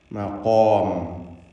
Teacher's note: ഖാഫും അലിഫും തഫ്ഖീം ചെയ്ത് ഉച്ചരിക്കുക, തടിപ്പിക്കുക.